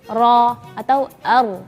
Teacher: lidah itu naik sekali doang e getarannya sekali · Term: huruf ro